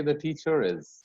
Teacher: in British and in Australian English, the R is also pronounced when the word ends with an R and the next word starts with a vowel